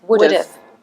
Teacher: Pushed together, it becomes WOULD'VE, now this is called a contraction